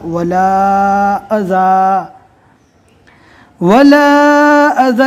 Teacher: لا ہے یہاں پر رکنا نہیں ہے، اگر رک گئے تو آگے والے ٹکڑے کو واپس ملا کر پڑھنا ہے، لیکن ہم یہاں پر جو رکے ہیں آپ کو وقفہ کا طریقہ سمجھانے کے لیے رکے ہیں کہ دو زبر جو ہے وہ رکنے کی حالت میں الف مدہ بن جائے گا۔ جب رکنا ہوگا تو دو زبر کو الف مدہ سے بدل کر پڑھیں گے